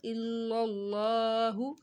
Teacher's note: لفظ اللہ سے پہلے زبر آ رہا تھا تو لفظ اللہ کو موٹا پڑا